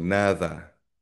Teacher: sa Spain ah mas malapit na sa th yung d sound nila.